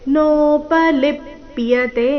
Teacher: ಲಿ ಮೇಲೆ ಆಘಾತ ಕೊನೆಯತೆ ದೀರ್ಘ